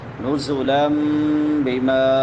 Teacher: نون تنوین کے بعد با ہے تو یہاں پہ اقلاب ہوگا